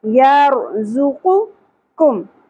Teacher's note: قاف حروف مستعالیہ میں سے بھی اتا ہے ٹھیک ہے اس لیے قاف کو ہم پر ادا کریں گے